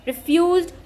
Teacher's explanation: Here the first syllable is not stressed and the second syllable is stressed.